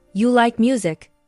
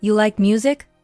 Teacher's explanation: That rising tone is a question in many situations.